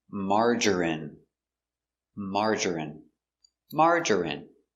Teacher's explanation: Three syllables. Stress only. First syllable.